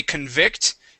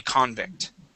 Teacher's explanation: with the accent at the very beginning okay that is now a noun